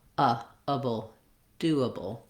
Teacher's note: so rather than a like aable we have able doable so staying short and light and using um a reduced vowel in those last two syllables of doable